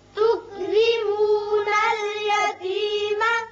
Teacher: یہ را باریک ہوگا، نیچے زیر ہے